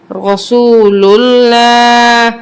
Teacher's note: اب یہاں پہ ہم لام کو پر پڑھیں گے کیونکہ اس سے پہلے پیش ہے. جب پیش ہو اور زبر ہو تو ہم لام کو پر پڑھتے ہیں اور جب لام سے پہلے زیر ہو تو وہاں ہم باریک پڑھتے ہیں.